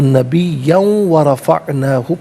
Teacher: یاد رکھیں کہ واو پر تشدید اس لیے ہے کہ پیچھے جو آخری کلمہ ہے نبیہ، تو اسے ملا کر پڑھیں گے تو نبیین میں دو زبر کی تنوین اسے واو کے ساتھ ملا کر واو کی آواز کو ادا کیا جائے گا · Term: یرملون کا قاعدہ